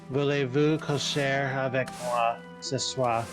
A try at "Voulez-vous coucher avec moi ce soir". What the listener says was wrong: You're very close in pronunciation, but it's coucher avec moi ce soir, because you don't really pronounce hard R's in French.